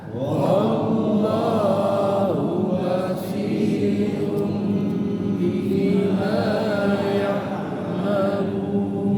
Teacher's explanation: si dibaca tebal jangan dibaca basyirun tapi Basi basi biasanya gara-gara ada huruf sad di depan banya jadi tebal.